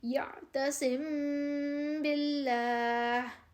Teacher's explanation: میم ساکن کے بعد با آ گیا، اس وجہ سے اس پر ہم نے غنّہ کر دیا۔ اور جب میم اور با کے علاوہ کوئی اور حرف ہو تو پھر ہم نے غنّہ نہیں کرنا، یعنی کہ آواز کو ناک میں نہیں کھینچنا ہم نے۔